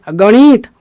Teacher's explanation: अण जो है मुर्धा में आता है तो जीभ को ऊपर ले जाना है मुर्धा के पास ले जाना है · एक तो मुर्धन्य पर होगा दूसरा नाक से भी होगा तब जाके आप अण बोल पाएंगे गणित गणित नहीं गणित